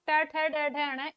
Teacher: ट वर्ग के अंतर्गत पांचों वर्ण ट, ठ, ड, ढ, ण, इनका उच्चारण मूर्धा से होता है, अतः इन्हें मूर्धन्य वर्ण कहा जाता है